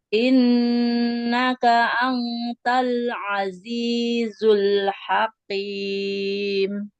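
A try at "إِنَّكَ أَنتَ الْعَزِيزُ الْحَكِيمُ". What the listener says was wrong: hakim. Kafnya jangan hakim, jangan seperti kof. Innaka antal azizul hakim.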